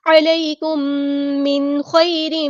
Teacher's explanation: میم ساکن کے بعد میم ہے تو ادغام شفوی ہوگا